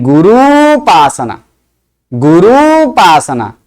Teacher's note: उ और उ दोनों मिलकर दीर्घ उ होता है